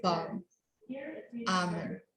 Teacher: in Britain and Australia, the L is silent. They say balm, almond.